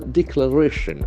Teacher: That accent falls on the third syllable.